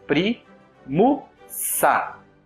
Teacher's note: E sa, que é uma sílaba breve também. Nós unimos o S final de primus com o A inicial de ab. · pri, que é uma sílaba longa. Aí, mu, que é uma sílaba breve. E sa, que é uma sílaba breve também.